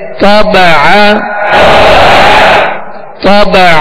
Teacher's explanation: عین زبر ع طبع طبع. طا کو پر پڑھیں گے اور عین کو درمیانے حلق سے ادا کریں گے